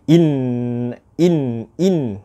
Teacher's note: tadi apabila kita menyebut huruf mim dan Nun musyaddadah ia akan kita akan merasakan satu getaran di hidung kita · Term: wajibul ghunnah